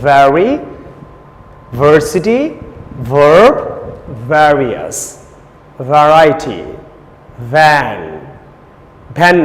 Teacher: ভি it's not ভি। উপরের দাঁত, নিচের ঠোঁট, ভি।